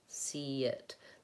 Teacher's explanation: there's kind of a hidden Y sound in there. See it, because of the transition between the vowels